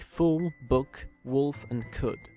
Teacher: the near-high back-rounded vowel, symbolized in the IPA by this horseshoe U. In English, the is always short and occurs in words like fool, book, wolf, and could.